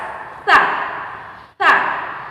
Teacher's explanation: ujung lidah dipertemukan dengan gigi seri bagian atas. Sa. Gigi seri bagian atas.